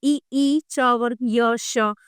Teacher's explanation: ये तालु से बोले जाते हैं